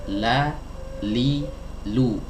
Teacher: Nah, ini adalah huruf lam ya, dikeluarkan dari sisi lidah bagian depan, baik yang kanan ataupun yang kiri ya. Kedua-duanya, kedua sisinya ini dipakai, sisi kanan dan sisi kiri.